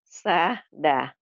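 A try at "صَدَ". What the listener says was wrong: Itu masih ada sahda. Sada, jangan sahda. Sada.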